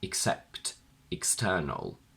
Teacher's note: When it's not stressed, the E turns into a weaker I.